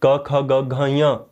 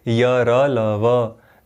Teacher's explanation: अच्छा, ईषद स्पृष्ट अब इनका यतन क्यों होता है, क्योंकि जब इनका उच्चारण हम करते हैं, इन वर्णों का जब उच्चारण होता है तो ये क्या करते हैं, इनके उच्चारण स्थान को छूने की कोशिश तो करते हैं, यत्न करते हैं, परंतु ईषद किंचित मात्रा से, बहुत ज़्यादा मात्रा से नहीं करते हैं, ज़्यादा यतन नहीं लगाते हैं, किंचित स्पर्श करते हैं, किंचित यतन लगाते हैं, अतएव क्या कहते हैं इनको, ईषद स्पृष्ट इनको वर्ण कहते हैं।